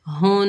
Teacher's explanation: نون مشدد میں ایک الف کی مقدار غنہ کریں گے، اور مشدد حرف کو مضبوطی اور جمع سے پڑھا جاتا ہے، تھوڑی دیر رک کر پڑھا جاتا ہے